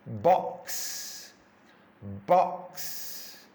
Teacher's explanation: X is two sounds put together it's the K sound cut cut and the S sound and you put those two sounds together to make the X